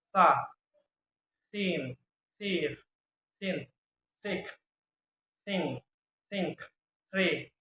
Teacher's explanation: Voiceless dental fricative sound